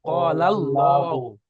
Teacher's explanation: না, ওটা বলতে হবে যে আল্লাহর শব্দ এখানে এসেছে আলিফ লাম লাম হা আল্লাহ, এই আল্লাহর শব্দের প্রথমে অর্থাৎ আগে লামের উপরে জাবার এসেছে, তাই আল্লাহর শব্দকে পুর করে পড়তে হবে, অর্থাৎ ল করে পড়তে হবে।